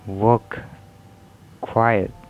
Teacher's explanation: w, that is voice bilabial approximant